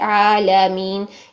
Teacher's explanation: लाम ये जो जबर के साथ आ रहा है आलमीन इसको भी ल मोटा नहीं करना बारीक रखना है